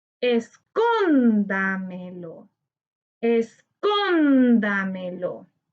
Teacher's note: Su sílaba tónica está en con, correspondiente a la anterior a la antepenúltima sílaba. Esta palabra es sobreesdrújula y le colocamos tilde porque todas las palabras sobreesdrújulas llevan tilde.